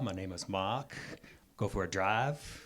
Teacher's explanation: there is a certain beauty to an R-less accent that we might see somewhere on the East Coast